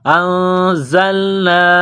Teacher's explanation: زا میں سیٹی کی آواز پیدا کریں گے، دانتوں کو ملائیں گے سختی سے